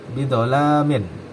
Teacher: sifat huruf ini adalah jahr atau bersuara kemudian rukhwah longgar istilla atau terangkat kemudian baq atau tertutup ya kemudian Ismat atau berat diucapkan nah